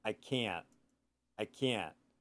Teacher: Americans don't pronounce the T.